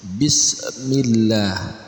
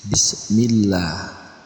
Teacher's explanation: Allah dibaca tebal tapi di sini karena ada huruf mim sebelum kata Allah maka dibaca tipis